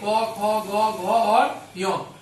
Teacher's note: इनका उच्चारण स्थल किससे होता है, कंठ से